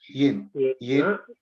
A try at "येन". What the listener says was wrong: Yena. Yena. There is no halanta here.